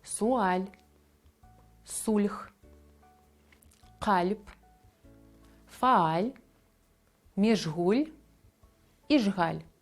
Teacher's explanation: В цих словах нема поєднання лі, лю, ель чи іль, ель, але читаються м'яко.